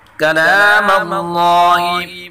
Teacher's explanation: اللہ کے نام کو پر پڑھیں گے